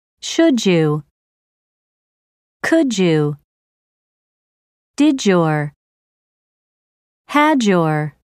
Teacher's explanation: a word ends with d and the next word begins with the combination of the two sounds changes to a j sound